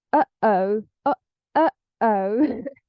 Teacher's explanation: So this uh-oh, something that we do between the and o, uh-oh. Yeah, we stop the flow of air in our throat, in our glottis. That's why it's called a glottal stop.